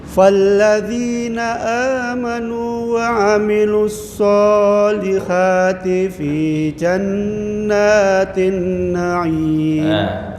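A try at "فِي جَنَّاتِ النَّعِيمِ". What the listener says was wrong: Jannatin na'im. Tempo dengunya kurang ya.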